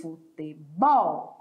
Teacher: Olha aqui a minha sílaba tônica, é o bol. Mas em espanhol, a sílaba tônica muda de lugar.